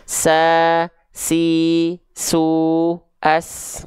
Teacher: huruf Sin juga dia punya sifat hams tapi kadarnya mengalir nafas